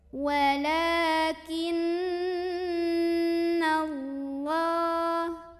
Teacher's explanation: huruf nun ini didengungkan dulu kurang lebih dua harokat jadi bunyi NY ditahan dulu sampai ada getaran halus ke hidung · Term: ghunnah musyaddadah